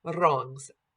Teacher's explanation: Just a flipped or tapped R.